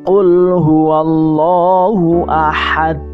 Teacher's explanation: ini qalqalahnya kubro karena dia berhenti di ayat wakaf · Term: qalqalah kubro